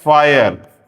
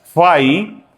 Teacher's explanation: र तो बोला नहीं जाएगा, क्या किया हमने, फ आ ई, ये डिफ्थोंग लगाया, फाई, और आगे लगा दिया अ। तो इसको कुछ लोग ट्रिफ्थोंग्स कहते हैं, ट्राइफ्थोंग्स कहते हैं।